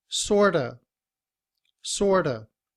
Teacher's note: IPA The Sounds look like this sort of sort of but in reduced form we drop the V sound at the end of of and we say sorta